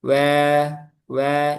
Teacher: Wau wau ketika diucapkan selalu memonyongkan kedua bibir